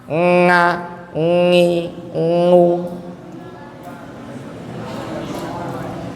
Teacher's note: Terus kasih dengung dari hidung